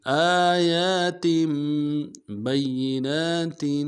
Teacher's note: با کو یا کے ساتھ ملانا ہے، یا کے اوپر تشدید زور دیں گے